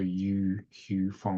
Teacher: It's not a long enough U to be two double O's. It's not a double vowel sound.